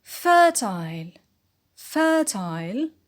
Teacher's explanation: the stress on fur